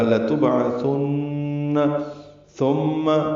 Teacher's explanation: ثم پھر ثا ہے اور میم ہے، میم مشدد غنہ ہوگا. ثم یاد رہے میم پر زبر بھی لمبی نہ ہو، ثم یہ کہنا غلط ہے. · با ساکن پہ قلقلہ ہے، عین وسط حلق سے ادا ہوگا، ثا نرمی سے پڑھیں گے اور نون مشدد پہ غنہ ہوگا